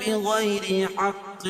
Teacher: را باریک پڑھی جائے گی، کیوں؟ را کے نیچے زیر ہے · یا ساکن سے پہلے زبر ہے تو یائلین ہوگا، اس کو نرم آواز کے ساتھ جلدی ادا کریں گے